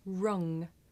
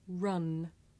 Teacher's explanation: Now ng is made at the back of the mouth and n is made behind the teeth.